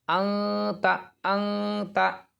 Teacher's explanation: اس نون ساکن کی آواز کو ناک میں چھپا کر پڑھنا چاہیے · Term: اخفا